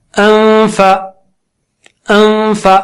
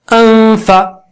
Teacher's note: انفا، انفا، اب کہہ رہا ہوں میں، اس کے بعد فا بولنے کی تیاری کر رہا ہوں، ہونٹ کو دانت پہ لگاتے ہوئے، اور اس دوران ناک سے غنہ کر رہا ہوں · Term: اخفا